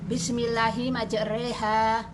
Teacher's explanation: Imalah yaitu fathah dibaca pertengahan antara fathah dan kasroh